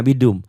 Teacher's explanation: mimnya gunnah ya, idgham bi gunnah karena ada dengungnya